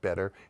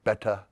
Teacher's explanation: where the usual American would pronounce them with a flap like better, he would say beta